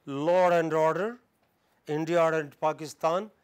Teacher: In these two phrases, law and order, India and Pakistan, an extra ra comes between law and. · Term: intrusion